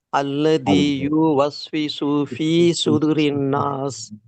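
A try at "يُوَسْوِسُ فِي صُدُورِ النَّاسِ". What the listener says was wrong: பாருங்க, யூ நீட்டினீங்க, ஆனா சுது நீட்டல. யுவஸ்விசுன்னு இப்பவும் சொல்றீங்க. யுவஸ்விசு நீங்க 5-10 தடவை சொன்னாதான் மாறும்.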